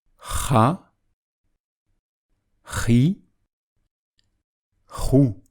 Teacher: le son provient du fond de la gorge en expulsant l'air rapidement, comme si on écrasait les poumons et que l'air sortait rapidement du fond de la gorge.